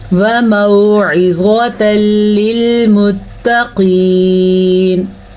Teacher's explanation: वमौइज़तल, عزواتل، عین کو واضح کریں، زوا کو پر پڑھیں اور یہاں پہ ادغام بلا غنہ کریں، دونوں کو ملائیں گے آپس میں۔ تنوین کے بعد لام آیا ہے، جہاں جیسے کہ یہاں پہ بھی تنوین کے بعد لام تھا، تو یہ بھی تنوین کے بعد لام ہے، تو اسے ہم ظاہر کر کے غنے کے بغیر پڑھیں گے اور ملائیں گے بھی آپس میں۔